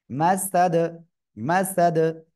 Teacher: মিম জবর মাস, সিন জবর সা, মাসা, দাল দুই জের দিন, মাসাদিন, অক্ফ করলে কি হবে, দাল সাকিন, তখন কলকলা হবে।